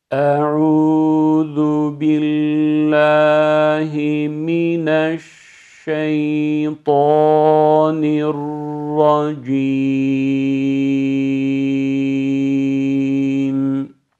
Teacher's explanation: Gördüğünüz gibi dudaklarımı ileriye sürmeden okudum.